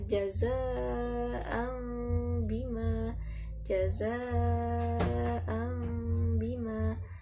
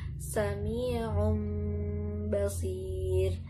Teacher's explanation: Selanjutnya contohnya tanwin bertemu dengan ba adalah jaza'an bima, jaza'an bima. Jadi tanwinnya bertemu dengan ba diganti suaranya menjadi mim. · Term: iklab